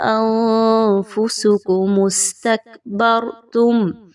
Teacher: اب یہاں پہ دیکھیں تو نون ساکن کے بعد فا ہے، اخفا کیجئے، نون کی آواز کو ہم نے کلیئر نہیں پڑھا، انفسکم واضح ہو گیا۔